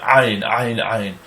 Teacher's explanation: It's a kind of a guttural, more harsh version of an aleph.